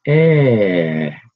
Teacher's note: the first one goes high and then comes back down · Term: slide